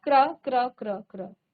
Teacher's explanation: क का आधा उच्चारण आ रहा है और र का पूरा उच्चारण आ रहा है